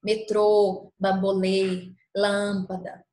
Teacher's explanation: Se o acento for o acento circunflexo, nós pronunciaremos o som de forma mais fechada.